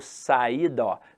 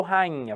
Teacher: o que que aconteceu com i ó ele ficou nasalizado